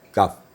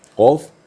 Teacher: Jadi lebih di depan. Makhraj kaf lebih di depan daripada qaf.